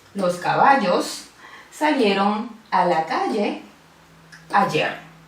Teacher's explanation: hay una cierta estridencia en esta pronunciación, hay una fricción que le da un sonido bien particular y definitorio de las personas rioplatenses en la mayor parte de Argentina y Uruguay. · Es un fenómeno lingüístico donde se pronuncia la doble L y la Y exactamente igual. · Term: yeísmo rehilado, yeísmo